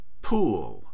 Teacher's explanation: The aspirated alophone has a brief puff of air